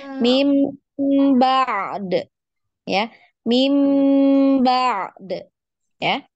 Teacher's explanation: Di ainnya dialirkan dulu baru di kolkolah huruf dalnya